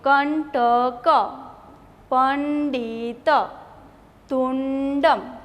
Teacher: તો અહીંયા ડ જ ને અણ નો ઉચ્ચાર ન થશે. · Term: અનુનાસિક